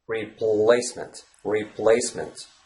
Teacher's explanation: the L Sound is a light l sound because it occurs in the beginning of a syllable